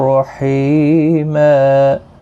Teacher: حی یا مدہ ہے، ایک الف کی مقدار کے برابر کھینچیں گے